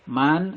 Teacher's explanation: dibaca panjang, 2 harokat, namanya mad tabi'i karena fathah berdiri